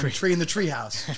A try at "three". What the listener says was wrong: And H, you're missing H in three. You're missing H in three. You said tree. Like a tree. Tree.